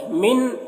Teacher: نون میں اخفا ہوگا، نون ساکن کے بعد تا ہے، حروف اخفا میں سے